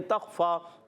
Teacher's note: تخفا تا کو خا سے ملانا ہے. خا حرف مستعلیہ میں سے الگ کے اوپر والے حصے سے ادا ہوتا ہے. فا پر کھڑا زبر ایک الف کھینچ کر ادا کرنا ہے.